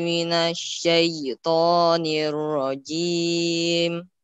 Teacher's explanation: Agak ditekan di syai-nya ya, agak ditekan sedikit di syai ya. Jadi syai, jangan syai. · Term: ya lin